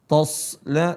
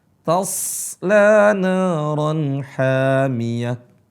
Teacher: huruf shad itu harus tebal, seringkali mengikut sertakan huruf sebelumnya tebal, yaitu huruf ta. Toslana, bukan to. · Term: Yang tebal hanya huruf shad